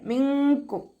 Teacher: നൂൻ സാക്കിനയെ മറച്ചു വെച്ചിട്ട് മണിച്ചോതി കൊടുക്കുക. നൂനിന്റെ സൗണ്ടിനെ അവിടെ വ്യക്തമായിട്ട് കേൾപ്പിക്കരുത്.